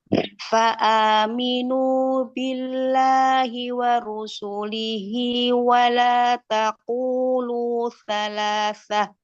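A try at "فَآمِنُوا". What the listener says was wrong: Minu, nunya coba jangan masuk ke hidung, matnya.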